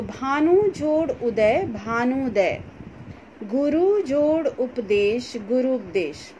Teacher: दो ह्रस्व ऊ मिलने के बाद दीर्घ ऊ यहाँ पर बन जा रहा है